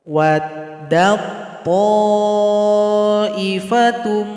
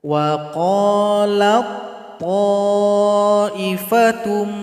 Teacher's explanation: Kemudian pada ayat 69 ada tasukun berjumpa dengan to, maka tasukun ini langsung gabung kepada to. Jadi kita nggak usah baca lagi ta ini, dal langsung loncat kepada to.